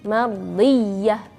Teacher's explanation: Ya-nya bertasydid, jadi harus di suara kita dinaikkan sedikit.